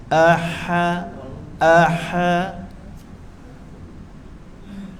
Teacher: A di pangkal leher, ha di tengah-tengah leher